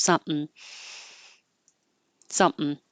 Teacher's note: when you're closing your lips for the sum you just keep them closed and you make the M noise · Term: syllabic in